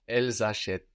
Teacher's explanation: that s between vowels will sound like a z